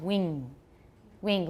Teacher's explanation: the default I think in Taiwan English is velar